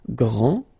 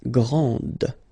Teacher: This final D is not pronounced. Okay, so grand, and then the feminine form, grande. Okay, so you put this E, and then you get the sound D, D, grande.